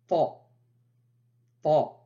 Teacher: se prononce au niveau de la pointe de la langue qui vient toucher l'avant du palais au niveau des incisives supérieurs